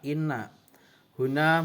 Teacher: karena ada huruf nun yang bertajdid, cara bacanya masuk dengan mendengung